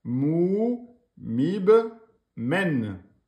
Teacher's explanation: le ba avec soukoun. On fait une qalqala, un rebond.